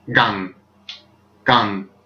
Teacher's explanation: G-A-N-G with a falling tone, gang. The G is harder than our G, which is probably where Kong was derived from, gang.